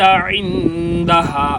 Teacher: عین کو گلے کے درمیان سے ادا، عین اور ہا ان دونوں کو گلے کے درمیان سے ادا کرتے ہیں۔